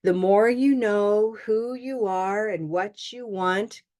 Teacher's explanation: notice the tone I go up and what you want